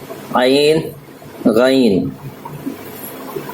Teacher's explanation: یہ دونوں حلق سے نکلیں گے، بیچ حلق سے نکلیں گے